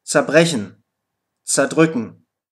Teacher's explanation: die Vorsilbe zer wird häufig einfach za ausgesprochen